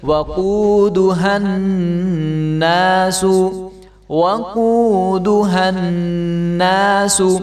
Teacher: ہا کو نون کے ساتھ ملائیں گے، گنہ کر کے پڑھیں گے